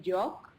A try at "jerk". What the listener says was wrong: Oh, well, jerk. It's the American R. It's not. It sounds like you said joke, but the word is jerk. J-E-R-K.